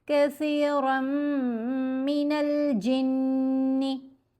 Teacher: कसीरम मिनल जिन्नि, नून पर भी गुन्ना, नून मुशद्दद हो या मीम मुशद्दद हो तो गुन्ना असल है, यानी आवाज़ को नाक में पढ़ेंगे और 2 हरकत की मिकदार आवाज़ को स्ट्रेच किया जाएगा, लंबा किया जाएगा।